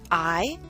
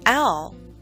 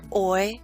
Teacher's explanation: generally and for boy we're moving from here to here again from a more open position to a more closed position the first vowel sound being longer and louder and then gliding into our second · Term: traditional diphthongs